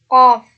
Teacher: pangkal lidah bertemu dengan anak anak lidah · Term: konsonan dorso uular